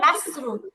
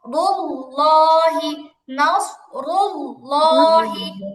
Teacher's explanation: সিন সদ যেহেতু সাদৃশ্যপূর্ণ সদের উচ্চারণটা স্পষ্টই মোটা হবে।